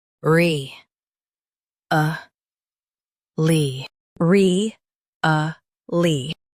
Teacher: Stress re and soften a lly.